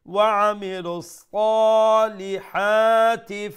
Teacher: Then again we have the ha middle of the throat and one alif long. So sa long sound, li short sound, then ha long sound